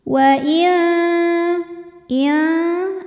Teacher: aqrab ikhfa aqrab karena nun sukun menghadapi huruf Ta Maka bunyi nun sukun samar-samar siap-siap menuju makhraj huruf ta disertai bunyi dengungan nah ini dengungnya sedikit ya suara yang masuk hidung sedikit dibandingkan · ini dengungnya sedikit ya suara yang masuk hidung sedikit dibandingkan aliran suara yang keluar dari mulut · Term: ikhfa Hakiki